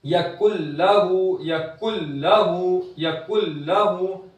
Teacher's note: नून की आवाज बिल्कुल नहीं आएगी, नून पूरा के पूरा लाम के अंदर दाखिल हो जाएगा, नून की आवाज बिल्कुल गायब हो जाएगी, बिल्कुल भी नहीं आएगी। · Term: इदगाम ताम